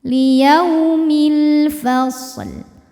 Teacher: lam qamariah karena alif lam menghadapi huruf qamariah yaitu Fa maka lam sukun dibaca jelas atau disebut dengan zhar qamari